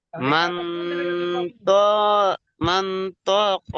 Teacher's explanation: তানবিনের আওয়াজকে নাকে তুলে এক আলিফ পরিমাণ গুণনা করে পড়িতে হয় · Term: ইকফা